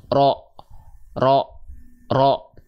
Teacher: vokal o pada huruf berharakat fathah yaitu Huruf tebal itu tidak dilafalkan dengan cara memonyongkan mulut